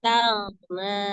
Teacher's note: Di situ ada ghain sukun ya. Ghain itu memiliki sifat roghah ya, mengalir. Maka dialirkan, tidak dipantulkan taghna, tapi taghna gitu ya.